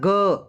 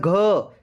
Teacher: उच्चारण के समय स्वर यंत्रियों में कंपन होता है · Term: घोष